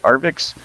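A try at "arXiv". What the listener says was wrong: Yeah, well, I think it should be pronounced like archive, like archive. It's just the Greek letter he, you know, kind of like H.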